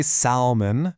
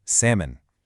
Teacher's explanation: Seriously, that L might as well not even be in the word. We do not say salmon. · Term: silent L